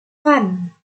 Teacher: Dan yang kedua, artikulasi labodotal, yaitu bunyi yang dihasilkan dengan menyentuh gigi dengan bibir atas